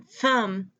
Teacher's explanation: The Th in thumb is a whispered sound, a voiceless sound.